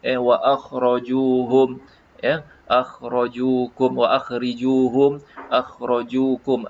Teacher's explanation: akhrijuhum min haitsu akhrajukum, sebutan tebal pada huruf kha